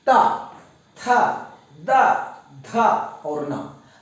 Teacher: पूरा ता का परिवार हमारे दांत को स्पर्श कर रहा है, दांत के पीछे हिस्सा को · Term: स्पर्श ध्वनि